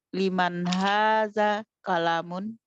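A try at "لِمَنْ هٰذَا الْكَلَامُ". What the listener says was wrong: kolamu, bukan mun.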